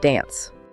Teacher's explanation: In American English, the A in dance is short, like in cat. But in some other accents, that A sound is much longer, like in father.